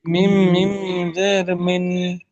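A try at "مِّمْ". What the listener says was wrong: জি, মিন নয়, নুন উচ্চারণ হবে না, মিম মানে মিম উচ্চারণ হবে, মিম, মিম মিম জের মিম।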